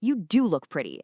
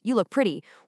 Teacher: By utilizing a dummy do and placing nuclear stress right on it